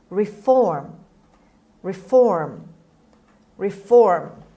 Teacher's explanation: the stress is on f on the second syllable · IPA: /rɪˈfɔːm/